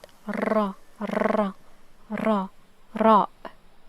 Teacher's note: It's closer to the Spanish ra. Okay, the sound occurs when the tip of the tongue presses to the surface upper palate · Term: letter ra